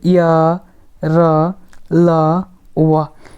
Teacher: इनकी उच्चारण जीभ तालू दांत और ओठों के परस्पर सटने से होता है किंतु कहीं भी पूर्ण स्पर्श नहीं होता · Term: अर्ध स्वर